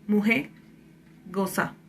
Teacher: La vibrante simple, o sea la R, se suele elidir en contexto final de palabra